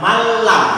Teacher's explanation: Nunnya dimasukkan ke dalam lam, kemudian lamnya ditasdid tanpa dengungan. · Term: idgham bila gunnah